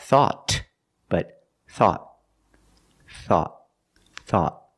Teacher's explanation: at the end the tongue goes up and makes a stop T